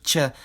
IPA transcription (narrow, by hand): tʲ